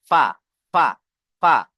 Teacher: নিচের ঠোঁটের ভিজে অংশ এবং সামনের উপরের দুই দাঁতের আগার সাথে লাগে উচ্চারণ হয়। এই সামনের উপরে যে দুটো দাঁত আছে না, এই দুটো দাঁতের আগা গিয়ে এই নিচের ঠোঁটের ভিজে অংশে লাগবে।